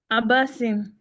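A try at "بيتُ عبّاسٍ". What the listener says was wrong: Yes. Baytu Abba. The ba has to be a little longer. Baytu Abbasin.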